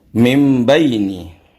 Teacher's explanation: Merubah dari tanwin ataupun non mati menjadi mim. Karena mim baini di sini adalah non mati, maka non matinya berubah atau dirubah. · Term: iqlab